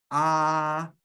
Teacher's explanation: A es la boca más abierta que vas a tener en español.